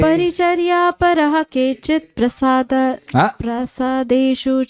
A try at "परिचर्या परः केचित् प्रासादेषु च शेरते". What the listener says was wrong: प्रो नहीं है, प्रा है। प्रा मतलब महल। परिचर्या परहा केचित् प्रासादेषु च शेरते।